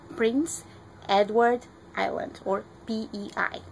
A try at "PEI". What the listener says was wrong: And we say PEI as one syllable, not individually.